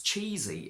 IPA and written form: ˈtʃi:zi (CHEESY)